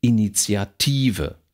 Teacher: ist ein sehr langes Wort ist auf der vorletzten Silbe betont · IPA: /init͡sjatˈiːvə/